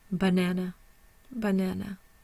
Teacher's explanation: the primary stress is on the na there's no secondary stress and the schah is over the first